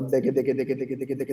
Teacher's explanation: è semplicemente appena dietro alla punta della lingua che fa la D c'è la G, oppure taca taca taca taca se volete, se preferite, appena dietro la T c'è la K. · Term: doppio staccato